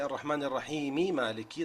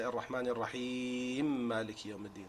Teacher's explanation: So they do idgham between the two memes.